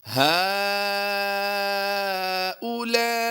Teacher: हमने हा खड़ी ज़बर हा को भी खींचना है और लाम अलिफ ज़बर ला को भी खींच कर पढ़ना है। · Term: मद्दे मुत्तसिल